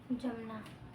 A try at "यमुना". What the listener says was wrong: यमुना। यमुना नदी है, जमुना नदी नहीं है, है ना। नदी जमुना नहीं है, जमुना नहीं है।